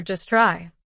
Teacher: The T is silent because it's between consonants.